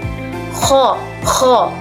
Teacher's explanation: kho dengan cara mengambil sedikit udara melalui tenggorokan